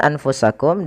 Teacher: sama seperti Kemudian berfalikum pada lafal anfusakum bacaan anfusakum di sini ada huruf nun yang ia tidak berharakat maka kita hukumnya dengan nun sukun Kemudian bertemu setelahnya huruf Fa maka suara nunnya disamarkan kepada huruf Fa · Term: ikhfa